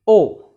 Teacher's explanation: it is the back part of the tongue that is used and it is almost in an open position or just about open position slightly above open position we can